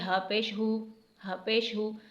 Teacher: اس ہا کو سینے سے ادا کریں گے اور پیش کو جلدی سے پڑھیں گے